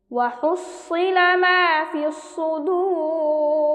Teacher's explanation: দাল ওয়াও পেশ দু, র জের রি। এখানে মাদের হরফে বামে হরফে ওয়াকফ হয়েছে মাদ্দে আরজি, আমরা 3 আলিফ টান দিয়ে পড়ব।